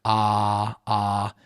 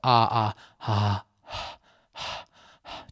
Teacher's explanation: So just like you're at the doctor's, ah, ah, except drop the phonation or vocal cord vibration so it's silent except for a slight sound of breath moving. So ah, ah, ah, just breath.